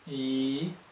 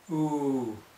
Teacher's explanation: we go okay we've now gone from the two extremes where the tongue is the highest in the mouth at the front e and at the back ooh